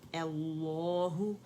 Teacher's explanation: दोनों लाम मुख़फ़्फ़फ़ होंगे, मोटे होंगे, क्योंकि लफ्ज़ुल जलाला से पहले हमारे पास फतह आ रही है